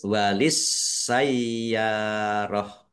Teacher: Ya fathah alif mat tobi'i, panjang dua harokat. Tak marbutoh karena wakob, dibaca hak sukun.